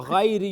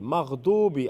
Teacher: Because of the quality of isti'la, Ghain is full mouth